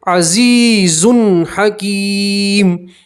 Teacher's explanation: یہاں مد اسلحہ الف کے بعد کھینچیں گے اور تنوین کا اظہار تنوین میں گننا نہیں کریں گے. عزیز تنوین کو ظاہر کر کے صاف پڑھیں گے. حکیم دو پیش کی تنوین کے اوپر وقف کریں گے, دو پیش کی تنوین کو جزم سے بدلیں گے.